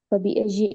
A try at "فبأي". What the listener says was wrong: Okay, it's not فبأي because it kind of sounds like you're saying with jim. فبأي with ya.